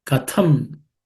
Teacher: the second letter th is aspirated